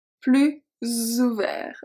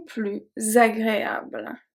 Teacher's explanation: So technically those 2 are pronounced plus, but because of the O of ouvert and the A of agréable, we are going to pronounce it as a Z sound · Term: une liaison